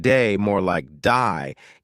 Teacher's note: Australian accent, they may say words like day more like die, giving words a slight twist.